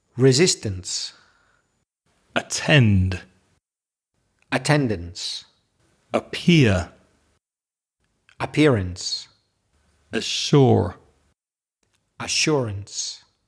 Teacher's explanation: So, like the previous two groups, the ence and the ance suffixes, they sound the same. You won't know there's a difference in the spelling pronouncing them because they both have the schwa sound.